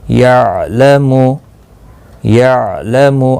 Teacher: عین ساکن کو ہلانا نہیں، یعنی قلقلہ نہیں کرنا ہے